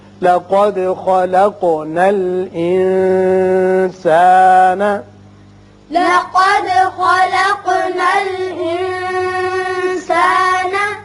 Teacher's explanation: قوف پر پڑھیے، دال کی صفت قلقلہ اس لیے کہ مجزوم ہے، اسی طرح قوف کی بھی صفت قلقلہ ادا ہوگی. یہاں نون پر اخفا ہوگا اس لیے کہ سین حروف اخفا میں سے ہے